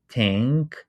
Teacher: If you produce this uh the word tank and you don't produce the last part n you will hear that your vowel is what we call nasalized meaning that the airflow is going through nose not only mouth